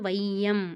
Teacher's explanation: வையம் அப்படின்னு கொஞ்சம் ஸ்டாப் பண்ணிட்டு தான் போறோம் அது வந்து ஒன்றரை மாத்திரை அளவுல ஒலிக்குது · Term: ஐகாரக் குறுக்கம், ஐகார குறுக்கம்